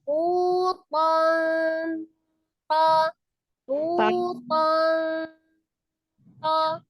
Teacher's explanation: itu kan ujung lidahnya kan ada di pangkal gigi seri atas